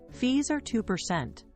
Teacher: Notice how the pitch drops on percent. That drop says, this point is settled. · Use a falling pitch on the final word to close the loop. This is called downstep, and it instantly sounds decisive.